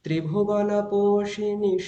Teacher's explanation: একটু উঁচু গলায় হবে, মানে প্রথমটা নিচু গলায় হয়েছে, একটু উঁচু হবে